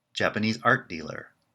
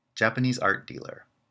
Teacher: you can hear the difference in pitch which reflects the difference in the compound word structure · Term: compound stress